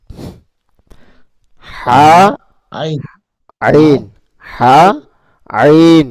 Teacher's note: এই দুটি হরফ উচ্চারণ হয় হলকের মধ্যখান হইতে।